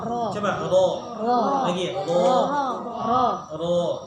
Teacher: ujung lidah bertemu dengan langit-langit ya, bagian depannya, atas ke depannya. Nah, maka bagian lidah ini juga yang ditempelkan itu adalah sedikit di bagian perutnya, perut lidahnya. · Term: makhraj ro